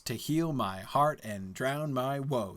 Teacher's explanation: That is like perfect iambic tetrameter